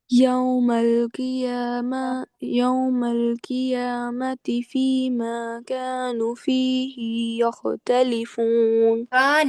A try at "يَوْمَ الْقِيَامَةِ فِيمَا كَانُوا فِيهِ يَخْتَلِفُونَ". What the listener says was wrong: نو کو بھی پورا واؤ مدہ پوری کریے نا، آپ میں سے اکثر یہ پڑھتے پڑھتے نون کا واؤ مدہ کھا جاتے ہو، کا نو فی ہی، کا نو فی ہی، نو کو پھر نو پیش نو ہو گیا نا، کا نو فی ہی، ٹھیک ہے؟